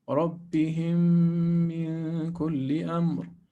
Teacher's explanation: since we have a shadda and we have a merging, what we're going to do is to put two harakat